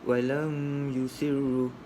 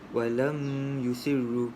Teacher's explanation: Mim mati bertemu dengan ya tanpa dengung. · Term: izhar syafawi